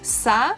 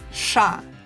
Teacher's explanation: So you start with sa and then you move your tongue to the back of your mouth. So the first one is sa, and then the same thing with the tongue back is sha.